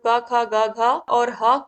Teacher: क ख ग घ और ह कंठ ध्वनियां है